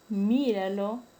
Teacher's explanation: la sílaba tónica está en la antepenúltima sílaba. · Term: esdrújula